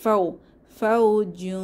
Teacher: ফাও হচ্ছে কি লিনের হরফ, জবরের বাম পাশে জজমলা ওয়াও, তাহলে লিনের হরফে নরম করে দ্রুত পড়তে হয়।